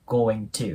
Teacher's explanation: この▁going▁の▁G▁また破裂音で音がなくなります。